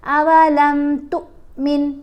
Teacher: تا کو لمبا نہیں پڑھیں گے، تا کو تھوڑا جھٹکا دے کر پڑھیں گے، چھوٹی آواز بنے گی